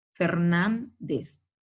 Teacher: la mayor fuerza de voz está en la penúltima, pero sobre todo porque termina en Z. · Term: palabras graves